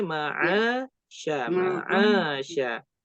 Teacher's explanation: Antara ma'a dengan sya harus sama panjangnya